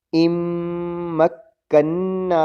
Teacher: پہلا میم بھی مشدد ہے غنہ ہوگا، آخری نون بھی مشدد ہے غنہ ہوگا